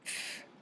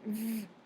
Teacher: Unvoiced means there is no vibration. The f sound is an example of an unvoiced consonant, and v is an example of a voiced consonant.